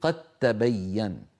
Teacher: يعني قد تبين، دال ساكنة بعدها تاء، صحيح أنهما حرفان متجانسان ومن المخرج نفسه، لكن لا يمكن إدغام دال في تاء إلا إن حولنا الدال في قد إلى تاء، فعندئذ تصير قد تبين. قد تبين فيلتقي تاءان يعني متماثلان والأول ساكن، فندغم الأول في الثاني فتصير قد تبين. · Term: الإدغام